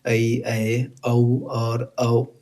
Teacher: जो दो अलग अलग स्वरों के मेल से बनते हैं वे क्या होते हैं? संयुक्त स्वर होते हैं।